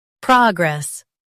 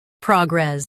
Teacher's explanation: Stress pra in US, prog in UK. Keep gress light.